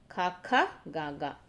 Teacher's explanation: సో కంఠము నుండి పలికేవన్నమాట. ఖాఖ, గాఘ వీటిని కంఠ్యములు అంటాము, కంఠము నుండి పలికేవి